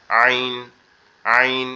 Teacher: আইনের উচ্চারণটা হবে আমাদের কণ্ঠনালীর যে মাঝ বরাবর, অর্থাৎ আমাদের যে গলার উঁচু অংশটা আছে এখান থেকে একটু গলাটা চেপে একটু বসা বসা আওয়াজে